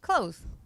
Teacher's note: so I say clothes I don't pronounce the th